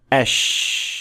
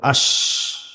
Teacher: So unlike gimm sheen is a fricative sound which means that it is produced by the sound of air passing through the small space that is created. That's why sheen is a continuous sound that will flow as long as you can push air out